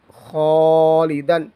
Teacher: الف پر پڑھیں گے کیونکہ خا حروف مستعلیہ میں سے ہے